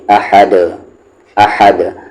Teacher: پھر الف پہ زبر ہے ہا کو دال میں حد، یہاں پر جو دو پیش ہے وہ جزم بن جائے گا کیونکہ آگے آیت ہے، اور دال پر اگر جزم آتا ہے تو پھر وہاں پر قلقلہ ہوتا ہے، یعنی آواز کو باؤنس کرتے ہیں